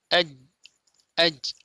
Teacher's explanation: Lihat di sini, huruf jim, maka makhrajnya adalah tertutup, ya, sehingga suaranya, aliran suaranya tertahan. Aj, aj, inilah sifat syiddah.